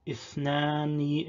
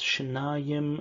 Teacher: Arabic has th, this interdental, in several numerals, whereas Hebrew has shifted these sounds in general, not just numbers, to sh